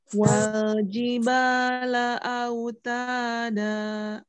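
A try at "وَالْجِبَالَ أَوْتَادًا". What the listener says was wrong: Ya, terakhirnya, Om. Ya, biasanya di akhir suka ada hamzah. Itu tidak boleh ya, Om. Misal autada. Nah, jadi madnya hilang langsung di udara suaranya.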